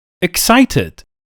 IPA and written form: ɪkˈsaɪtɪd (excited)